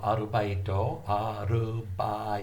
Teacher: There's only one R sound. There's no L in Japanese.